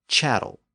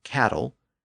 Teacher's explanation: the CH sound of Paris versus the ca sound of Normandy